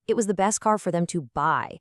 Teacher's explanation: That word buy gets the final main punch of attention. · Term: nuclear syllable